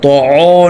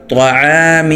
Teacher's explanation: حلق سے، میم دو زیر من، اس پر اخفا ہوگا، طعام، طا موٹا ہو عین موٹا نہ ہو ، طعو نہیں بولنا، طعام، وقفاً طعام، عین زبر ع، عین